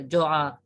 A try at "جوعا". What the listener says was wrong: یہ عربی میں کھڑی زبر نہیں ہے.